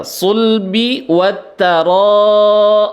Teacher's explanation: ro-nya mad wajib mutasil, dibaca panjang 6 harokat.